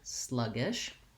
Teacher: You don't want a vowel sound S slug, but just starting on the S, slug. And then the ish is just an unstressed lax I sound